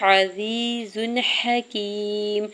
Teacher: حکیم عین کی زبر کو بغیر کھینچے ہوئے ادا کرنا ہے، یا ساکن سے پہلے زا کے نیچے زیر ہے یا مدہ ہو رہا ہے، 2 حرکت کھینچ کے ادا کریں گے ، زا کے اوپر 2 پیش کی تنوین پر اظہار حلقے · زا کے اوپر 2 پیش کی تنوین پر اظہار حلقے ہوگا یعنی غنہ یا اخفا نہیں کریں گے